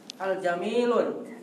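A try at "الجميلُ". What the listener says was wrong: Hati-hati bacanya. Al? Kenapa tanwin? Al-Jamilu, iya.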